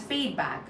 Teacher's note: You're stressing on feed feedback.